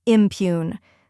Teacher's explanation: Then comes pune, which rhymes with tune. The P is soft and followed by the Y sound like in you, and the oon part is like the sound in moon.